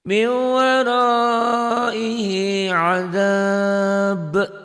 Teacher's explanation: Ada mad tabii yang ketemu satu huruf hidup dihentikan jadi mad arid disukun. Adab karena banyak huruf qalqalah dihentikan jadi qalqalah kubro, qalqalah besar.